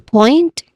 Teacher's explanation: It has a clear dip oi dip thong sound here. So the dip thong sound is oi.